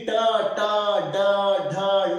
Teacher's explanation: ಮೂರ್ಧ ಅಂದ್ರೆ ಮೇಲ್ದಂತದ ಹಿಂಭಾಗ. ಈ ಟ ಟ ಡ ಢ ಣ ಅನ್ನಬೇಕಾದ್ರೆ ನಾಲಿಗೆ ಹೋಗಿ ಎಲ್ಲಿ ಬಡಿತದಲ್ಲ ಅದಕ್ಕೇನಂತಾರ, ಮೂರ್ಧ ಅಂತಾರ. ಮೂರ್ಧಕ್ಕೆ ನಾಲಿಗೆ ಬಡಿದಾಗ ಈ ಅಕ್ಷರಗಳು ಜನಿಸ್ತಾವ. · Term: ಮೂರ್ಧನ್ಯ ವರ್ಣಗಳು